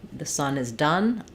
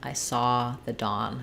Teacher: the done has the schwa and Dawn has the ah